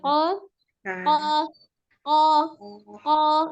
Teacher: Kembali qafnya ko, rongga mulutnya tetap terbuka, hanya pangkal lidahnya yang naik ya